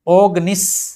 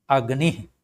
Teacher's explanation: ह्रस्व स्वर होने के कारण ओ जो है अ में बदल गया है